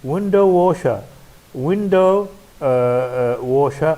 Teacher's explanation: Window washer, also compound word. The stress on win.